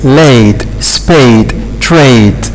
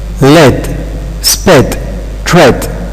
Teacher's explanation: Both of them are mid vowels. But both of them are front because they are produced at this front part here.